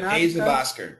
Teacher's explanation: you connect the f to the o